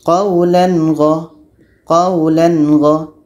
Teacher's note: Tanwin harus jelas, gha pun harus jelas dan tiada dengung.